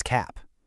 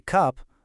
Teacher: For that ah sound in cap, the jaw has to open really wide. But for our nice, relaxed sound in cup, the jaw just drops a little bit.